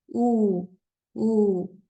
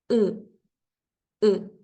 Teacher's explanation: redondeamos nuestros labios u u se forma un pequeño círculo pero cuando lo pronunciamos en japonés esta u No está redondeada se pronuncia estirando los labios